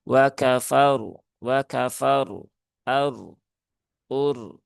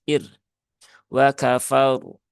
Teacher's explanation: Karena fnya berharakat fathah maka r-nya ini ketika berhubungan dengan fathah e maka r-nya dibaca dengan tafkhim ya atau tebal.